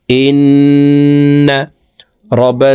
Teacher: নুন মিমে তাসদিদ হইলে সর্ব অবস্থায় নাকের বাসি থেকে গুন্না করিয়া পড়িতে হয় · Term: ওয়াজিব গুন্না